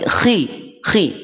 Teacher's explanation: rahang dia tetap pada berada pada rahang tebal tapi bunyinya adalah kasrah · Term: tafkhim nisbi